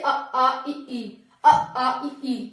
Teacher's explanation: नाक से नहीं, केवल मुंह से इनका उच्चारण होता है। जैसे अ आ इ ई, अ आ इ ई, मुंह हो रहा है, बिल्कुल नाक पे नहीं जा रहा। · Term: निरनुनासिक